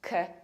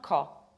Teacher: You have to reduce the first syllable, k, not ko, k.